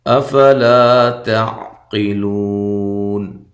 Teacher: حمزہ کو تحقیق کے ساتھ، لا الف مدہ ہے. تا کو باریک پڑھنا ہے، قاف کو موٹا، لو واو مدہ ہے، اور وقف کی صورت میں یہاں مد کر سکتے ہیں.